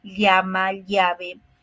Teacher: pronunciamos haciendo que el aire salga por los lados de la lengua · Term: Laterales